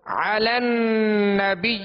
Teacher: عین کو وصل حلق سے ادا کریں گے